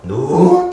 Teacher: 낮았다가 높아지다 보니까 상대적으로 음의 길이가 좀 길다고요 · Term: 상성